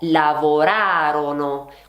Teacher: È sdrucciola, ovvero l'accento va sulla terzultima sillaba e infatti la pronuncia è lavorarono, quindi fate attenzione.